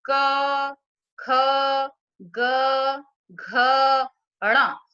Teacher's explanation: इसी तरह जब हम बोलेंगे क, ख, ग, घ, ण, तो हमारे कंठ से सीधी ध्वनि निकल रही है, इसलिए हम इनको कंठ्य कहते हैं।